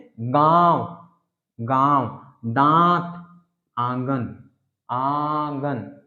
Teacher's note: तो ये जो चंद्र बिंदु, यही को अनुनासिक वर्ण, ऐसे स्वरों का, यानी जो अनुनासिक स्वर, जो अनुनासिक नाक से जो उच्चरित होते हैं, ऐसे स्वरों का उच्चारण नाक और मुंह, इससे होता है।